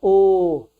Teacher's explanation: जैसे बोलते हैं ओ, जैसे क्या होता है, मुंह गोल हो जाता है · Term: वृत्ताकार मुखी